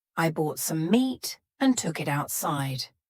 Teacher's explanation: the word outside has a t in the middle but because this word is kind of two words put together we're going to have a stop there in the middle · For each of those T's, my tongue is stopped at the top of my mouth. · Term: stopped tea, stopped T